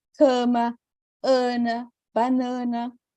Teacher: quando eu tenho essa vogal antes de M ou N, isso a gente costuma nasalizar.